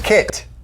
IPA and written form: kɪt (Kit)